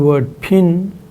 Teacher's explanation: the nasal vowel in pin is assumed to result from the occurrence of the sound na by its side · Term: nasal e vowel